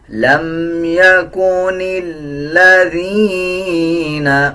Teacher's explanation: نون کو لام کے ساتھ ملائیں گے، لام سے پہلے جو الف ہے اس کو سائلنٹ کر دیا جائے گا